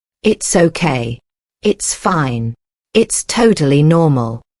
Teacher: Notice how the stress falls on okay, fine, and normal.